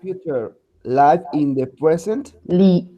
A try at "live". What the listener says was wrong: Acá dice live, no life. Es life. Entonces con F.